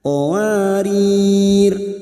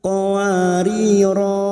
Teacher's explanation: baik dibaca wakaf maupun wasal berhenti maupun terus tetap dibaca pendek bunyinya qowarir bukan qowariro tetapi qowarir sekarang baik qariro yang di